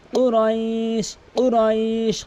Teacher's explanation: কফটি জিব্বার গোড়া উপরে তালু থেকে ধাক্কা দিয়ে